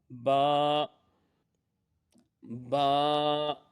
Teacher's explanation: यह दोनों होठों के तर हिस्सा से अदा होगा · یہ دونوں ہونٹوں کے تر حصہ سے ادا ہوگا